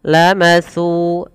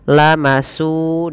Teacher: Kemudian kita lihat pada kata setelahnya, lamatsubatum min indillah. Lamatsu, hati-hati di dalam melafalkan huruf sa, tidak boleh kita menggantinya, mengganti jadi huruf sin. Terdengar bunyinya lamasu dengan s, padahal di sini bukan s yaitu sa.